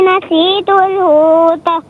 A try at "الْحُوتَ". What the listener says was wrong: حوت نہیں، حوت یعنی بالکل ساکن کریں گے، آواز یعنی تا پر حرکت نہیں دیں گے، ٹھیک ہے؟